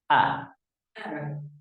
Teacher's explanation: They're both pronounced from the bottom of the throat. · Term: Hamza and Ha